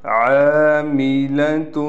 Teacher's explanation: عاملۃ، یہاں عین کے بعد الف ہونے کی وجہ سے عین کو ایک الف کی مقدار کھینچ کر پڑھیں گے